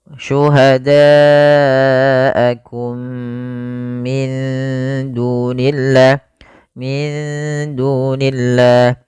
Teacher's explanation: Ini merupakan bacaan idgham mimi, yaitu mimnya dimasukkan kepada mim yang kedua dan ditahan